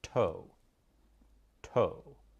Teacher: The tongue moves up in the mouth with the tip of the tongue striking the dental ridge. That's where the teeth meet the roof of your mouth.